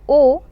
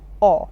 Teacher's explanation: vowels now remember here the vowel is o and not or when you say o you are opening your mouth a little less the gap between your lips is less as compared to when you say or